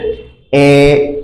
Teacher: জিহ্বার অবস্থানটা নিম্ন মধ্য, মানে একদম নিচে থাকে না, কিন্তু নিচ থেকে একটু উপরে থাকে হচ্ছে এ। আমরা জানি একটা মৌলিক স্বরধ্বনি হচ্ছে এ, সেটা উচ্চারণ করার সময়।